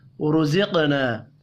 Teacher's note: رزقنا را اور قاف پر پڑھے جائیں گے. قاف ساکن ہے، قلقلہ بھی کرنا ہے. الف مدہ کو ایک الف کے برابر کھینچ کر پڑھیں گے.